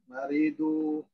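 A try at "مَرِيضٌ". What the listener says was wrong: Maridun, bukan maridu, maridun. Ditanwin ya. Jangan ragu-ragu.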